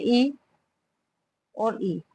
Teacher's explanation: ये जीभ के आगे वाले भाग से बोले जाते हैं। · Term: अग्र स्वर